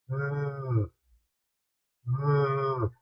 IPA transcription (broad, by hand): ð